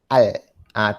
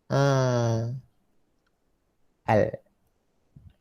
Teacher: Di situlah tempat keluar huruf. Ujung lidah mengenai langit-langit keras sebelah depan.